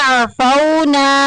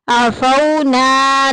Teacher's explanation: واو کو بغیر کھینچے بغیر جھٹکا دیے نرمی سے معروف پڑھیں گے۔ عفونا، نا میں الف پیچھے زبر آگئی، الف مدہ کا قاعدہ جاری ہو رہا ہے۔